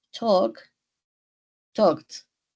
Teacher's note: en el verbo hablar, la L es casi muda, es una L diferente a la nuestra